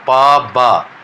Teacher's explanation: लिप जो दोनों lips एक दूसरे से टाइटली क्लोज्ड हो जाते हैं, जैसे पा बा, टाइटली क्लोज होने के बाद में ये साउंड का प्रोडक्शन होता है।